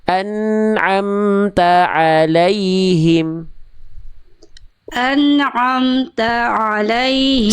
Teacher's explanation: Saya tanyain dulu ya, tadi huruf ain agak tebal, tapi bukan kesalahan besar. Huruf ain jangan masuk, jadi jangan kayak ada tasdidnya